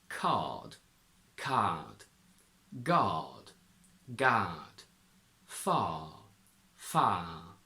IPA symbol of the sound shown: ɑ: